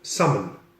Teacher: And this delicious fish is not called salmon, the L is silent, it's called salmon.